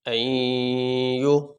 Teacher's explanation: اب یہاں پہ ہم یہ حمزہ نون اور یا یہ تین حرف ہیں، تو جب ہم پڑھیں گے اس کو تو نون جو ہے وہ اس میں ظاہر نہیں ہوگا، اس کو ہم یا کے ساتھ ملا کے پڑھیں گے. نون کی آواز ظاہر نہیں ہوگی لیکن ہم یہاں پہ غنہ کریں گے. این یو یہ جو ہم پڑھ رہے ہیں اس میں نون کی آواز ظاہر نہیں کی جا رہی.